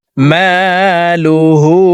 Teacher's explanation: হা হরফের উপরে উল্টা পেশ আছে, তাই ঠোঁট গোল করে এই হাকে 1 আলিফ টেনে পড়তে হবে।